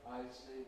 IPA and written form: ˈaɪsi (icy)